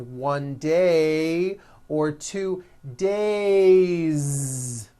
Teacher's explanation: It's not days, unvoiced, it's days with a voiced Z ending.